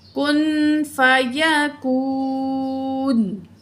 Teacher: کن، نون ساکن کے بعد فا آ رہی ہے، حروف اخفا میں سے ہے، تو نون کی آواز کو ناک میں چھپا کے پڑھیں گے